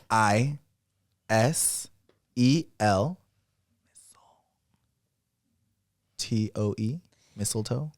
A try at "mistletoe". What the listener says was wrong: You got everything right except you said EL, huh? It's mistleto. MISTLETOE. Mistleto.